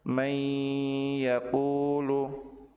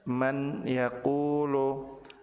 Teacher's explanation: maka nun sukun dilebur ke huruf ya dengan ditahan dan disertai dengan ghunah. Contoh, may yaquulu tidak boleh dibaca jelas. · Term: Idgham bighunah